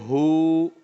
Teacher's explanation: ہا اس کی اپنی پلیس ہے ادا کرنے کی, حلق کے آخری حصے سے ادا ہوتا ہے